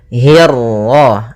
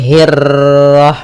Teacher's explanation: untuk huruf ra ketika dia berharakat tasydid itu atau dia berharakat sukun, dia ra-nya 1 kali takrirnya. Tidak boleh banyak-banyak, tidak boleh hirrah.